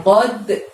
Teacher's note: Lalu lafaz berikutnya di ayat yang kedua ada bacanya qodha. Ada lagi huruf qalqalah di sana, dal sukun, maka harus dimantulkan ya suaranya ya